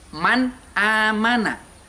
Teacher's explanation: nun sukun tersebut harus dibaca jelas suaranya itu jelas